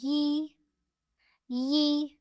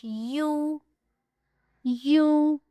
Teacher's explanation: غیر مدہ ہے۔ تو ان کا مخرج یہی والا ہے جو وسط لسان اور بالمقابل اوپر کا تالو ہے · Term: یا غیر مدہ